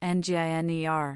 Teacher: engineer has stress on the last syllable